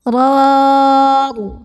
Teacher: Ra pertama ini dibaca secara tafkhim karena ra-nya ini berbaris fathah. Cara bacanya ditebalkan.